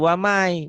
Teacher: Waman, jadi wamai, bunyi N-nya hilang, melebur ke Y